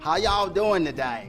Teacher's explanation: it has a much more of a southern drawl. Elongating those vowels a little bit and saying y'all every sentence.